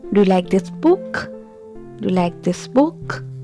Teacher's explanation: So there is a rise in my pitch at the end of the sentence. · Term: rising intonation